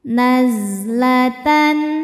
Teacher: Zai berdesis punya sifat namanya sofir, berdesis seperti lebah.